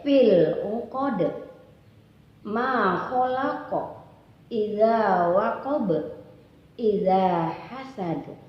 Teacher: di akhir-akhir ayat ada juga disebut dengan qalqalah, yaitu dimentulkan ya sedikit aja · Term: qalqalah sugro